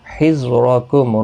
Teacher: वख़ुज़ू ज़ू वाव मद्दा है, खा हुरूफ मुस्तालिया है, पुर पढ़ा जाएगा। हिज़्रकुम रा पुर पढ़ा जाएगा ज़बर की वजह से, मीम साकिन ही रहेगा वक़फ़ की सूरत में।